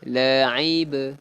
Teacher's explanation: Ba ni hukum dia apa? Qalqalah sughra. Jadi ada lantunan sikit. La'ib, ada ba.